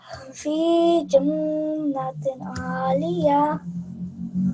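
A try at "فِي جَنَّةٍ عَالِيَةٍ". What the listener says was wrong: You tried to make the nasal sound, but you made another mistake. So here, the sound of ha wasn't clear. Make sure that when you are reciting, the sound is very clear.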